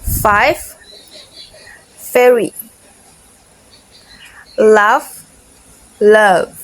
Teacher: Is voiceless and less voice. Both are labiodental fricatives, meaning they are produced by touching the bottom lip to the upper teeth.